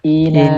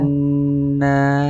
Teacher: Sama-sama tiga huruf, tapi lebih panjang yang gunnah.